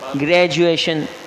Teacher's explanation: یہ ڈی جو ہے نا یہ جے میں تبدیل ہو جاتا ہے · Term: اقلاب